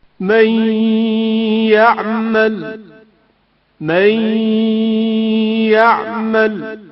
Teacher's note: حروف یمون عبارت ہیں یا، میم، واو، نون. یا میں نون ساکن کا ادغام جو غنہ کے ہمراہ ہے، مثلا من يعمل.